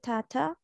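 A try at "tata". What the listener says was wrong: don't pressurise এত pressure দিবা না জাস্ট সফটলি বলো টাটা টাটা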